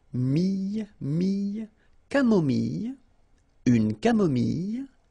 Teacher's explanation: So remember when we get this I and then double L, it goes like y